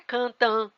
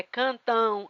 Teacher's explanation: Mas no final não é cantã, é cantão. Ã, e tem um u que é semivogal e que seria cantão. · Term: Ditongo fonológico